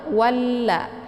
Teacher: Jadi cara bacanya itu ditekan wa-nya langsung dileburkan suaranya ke la, walla. Atau kata lain juga disebut dengan idgham syamsiyah ya.